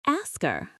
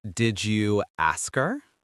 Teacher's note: If you ask a question like, "Did you ask her?" The H often disappears. The K sound at the end of ask moves over. It sounds like ask her.